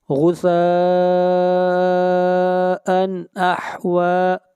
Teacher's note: ان کے اوپر اظہار کریں گے، اس لیے کہ تنوین کے بعد حروف حلقی میں سے حمزہ ہے